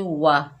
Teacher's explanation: वाव के ऊपर ज़बर बगैर खींचे पढ़ेंगे वाह, होंठों को गोल करके अदा किया जाता है वाव को